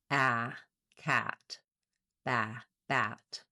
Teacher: The most open front lax vowel vowel a black cat vowel is a front lax open vowel. And what that means is the front of my tongue is down behind the back of my teeth. · the front of my tongue is down behind the back of my teeth. The back of my tongue is lifted and my jaw is fairly open. · It's the most open of the front vowels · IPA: /æ/